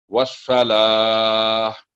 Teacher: لا کی آواز بالکل سیدھی ہوگی، باریک ہوگی. والصلاہ اور درمیان میں جو واو ہے وہ سائلنٹ ہے بالکل.